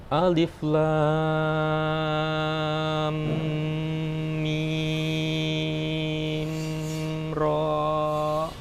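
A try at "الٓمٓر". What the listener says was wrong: Ro-nya 2 aja ya kepanjangan. Alif lam mim ra. Nah, mim ra.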